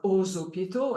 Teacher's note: The X is pronounced like a Z, like aux hôpitaux